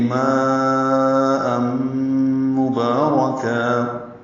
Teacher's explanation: یہ ادغام ناقص ہے، غنہ ہوگا، ام میں آواز ناک کے بانسے میں لے جائیں گے